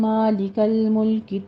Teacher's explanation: لام دونوں جگہوں پہ ساکن ہے، اس کو ساکن ہی رہنے دیجیے گا، اس کے اوپر قلقلہ نہیں کرنا